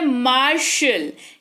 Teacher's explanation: फिर है MARTIAL, मार्शल, इसको पढ़ते हैं मार्शल, टी है, लेकिन टी का नामो निशान नहीं दिख रहा है आपको यहाँ पर उच्चारण में तालव्य श उच्चारण हो रहा है